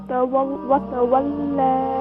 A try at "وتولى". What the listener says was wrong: Lam light, more light.